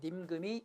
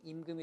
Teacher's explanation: 두음법칙 현상이 나타납니다. 그래서 어두의 니은음이 탈락되기 시작합니다. 그래서 님금이 임금이 됩니다.